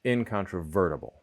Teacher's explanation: in a word like incontrovertible, the vert is the primary stress and we could say the N has secondary stress